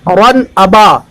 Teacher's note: اظہار کا قاعدہ اس وجہ سے کہ تنوین کے بعد حروف حلقی میں سے حمزہ ہے